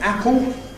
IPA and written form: ˈæpo (apple)